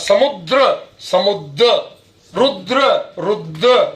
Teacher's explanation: तो द्र शब्द में द्र में रा का लोप होता